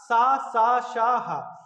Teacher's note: ये संघर्ष और घर्षण करते हुए निकलते हैं, इनमें थोड़ा जोर लगता है, घर्षण करते हुए निकलेंगे ये।